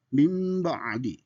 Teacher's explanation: Nun mati ketemu dengan ba itu seolah-olah ba di sana seolah-olah mim. Jadi mim ba'di itu cara membacanya dan selebihnya itu masuk kategori ikhfa. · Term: iklab